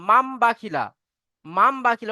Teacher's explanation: নুন সাকিনের পরে যদি বা আসে তাহলে নুন সাকিনের আওয়াজকে মিমের দ্বারা পরিবর্তন করে পড়তে হবে